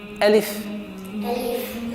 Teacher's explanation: Не надо растягивать алиф, а резко.